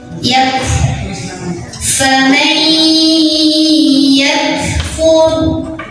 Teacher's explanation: hati-hati ketinggalan hamsnya atau anginnya.